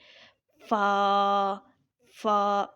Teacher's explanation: فا کو جب ہم اپنے اوپر والے دانت اگلے والے اپنے نیچے والے ہونٹ کے اوپر لگاتے ہیں تو فا ادا ہوتا ہے